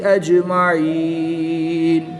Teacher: جیم حروف قلقلہ میں سے ہے اور جب حروف قلقلہ ساکن ہوں تو ان میں قلقلہ خوب ظاہر کریں گے، اس کو قلقلہ صغریٰ کہتے ہیں۔ · یا ساکن سے پہلے عین کے نیچے زیر ہے تو یا مدہ، یا مدہ کے بعد نون کی زبر کو وقف کی حالت میں ساکن کریں گے تو یہاں پر وقف کی حالت میں مد عارض ہوگی، 2 سے 3 الف تک کھینچ کر پڑھیں گے